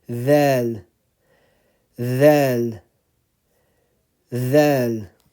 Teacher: So again, dhal, the front, the tip of the tongue is in between the upper and lower front teeth.